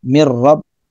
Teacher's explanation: Sekedar masuk saja nun matinya pada huruf ro sehingga nun matinya tidak dibaca, hanya dibaca ro, mir rabb, melebur ya. Mir rabbihim tanpa dengan tekanan atau dengung. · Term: Idgham bila guna